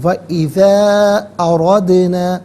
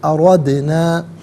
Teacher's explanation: اردنا میں دال ساکن ہے لیکن چونکہ یہ حرف قلقلہ ہے تو ناظرین آواز لوٹتی ہوئی محسوس ہونی چاہیے